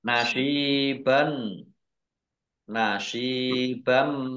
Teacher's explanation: bighhunah masuk dengan mendengung yaitu mendengung mim ditandai mimnya ada tasdidnya mim tasdid dibaca ghunah atau mendengung ditahan dua harakat · Nasiban, nasibam, shad kasroh ya sukun mat tabi'i panjang 2 harokat. Fathah tanwin bertemu dengan huruf mim idgham bi gunnah masuk dengan mendengung yaitu mendengung mim ditandai mimnya ada tasdidnya.